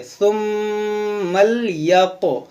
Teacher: ये मीम में गुन्ना करेंगे, इस मीम को लाम से मिलाएंगे